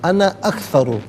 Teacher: یہاں پر انا کو ویسے عام طور پر الف مدہ کو کھینچتے ہیں، کہ یہاں پر انا کو کھینچیں گے نہیں